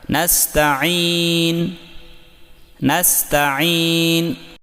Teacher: یہاں پر سین ساکن میں سیٹی کی آواز یعنی صفیر واضح کریں، صفیر کہتے ہیں سیٹی کو، اور عین کو حلق سے نکال کر یا کو لمبا کریں